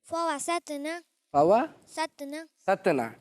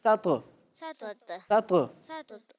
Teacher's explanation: لیکن تو کو موٹا نہیں پڑھ رہے، موٹا پڑھنا ہے